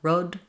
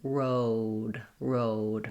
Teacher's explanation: the most common error pattern is just making this vowel too short, a monophthong, instead of a sliding diphthong. To practice, just thinking about making it longer tends to help, especially in these words that end with O.